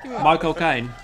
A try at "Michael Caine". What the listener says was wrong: No, you said my cocaine. It's Michael Caine.